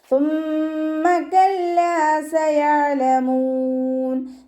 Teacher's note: നമ്മുടെ നാവിൻ്റെ അറ്റവും മേലെ മുൻപല്ലിൻ്റെ അറ്റത്ത് വെച്ചിട്ട് ഉച്ചരിക്കുക. പല്ലിൻ്റെ ഇടയിലൂടെ കുറച്ച് എയർ പോണ സൗണ്ടിൽ വേണം ഉച്ചരിക്കാൻ കേട്ടോ.